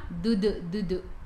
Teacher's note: Huruf dal, hujung lidah menyentuh gusi dan gigi atas. Maksudnya sentuh dua-dua.